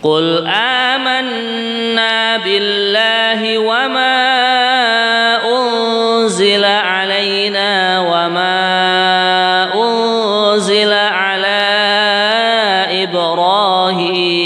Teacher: Unzila, nah, kemudian yang kedua wama ya, wama unzila lagi, kemudian yang ketiga ala, ini juga mad jaiz munfasil ya, 4 harokat